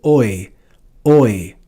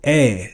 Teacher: In classical Latin this would be read as oi oi but in ecclesiastical Latin it's read as a